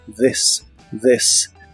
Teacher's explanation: la th de esta palabra es como una d vibrante